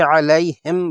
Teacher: ہاں کا مخرج حلق کا سب سے نچلا حصہ ہے، اس کی ادائیگی پر منہ کے اندر کی ہوا باہر نکلتی ہے